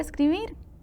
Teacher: aguda porque lleva el acento en la última sílaba